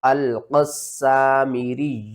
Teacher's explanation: نے کیا کرنا ہے، قاف کو سین کے ساتھ ملانا ہے، سین جو ہے وہ مشدد ہے، سختی کے ساتھ پڑھیں گے، 2 بار پڑھیں گے، سیٹی کے ساتھ پڑھیں گے